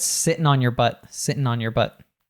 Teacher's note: when we have these words ending in ing, we'll drop the G. So he just said sitting on, and he reduces again the your, like we saw before.